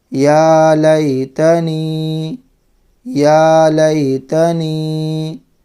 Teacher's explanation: ایک الف کی مقدار تھوڑا کھینچ کر کے پڑھنا ہے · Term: یا حرف مدہ